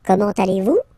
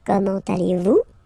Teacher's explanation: it's a question, so raise a little bit your voice at the end